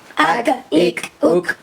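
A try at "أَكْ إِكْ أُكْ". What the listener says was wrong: अक नहीं करेंगे क्योंकि यह हरफ़े कलकला नहीं है अक इक उक हमजा काफ ज़बर अक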